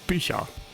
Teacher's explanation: So this is another example of assimilation where that I is a vowel that's up towards the front of your mouth, so that the ch that comes right after it wants to move closer to it